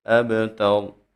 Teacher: جب با ساکن ہو تو اس کو ہلا کے پڑھا جاتا ہے، یعنی اس میں قلقلہ کیا جاتا ہے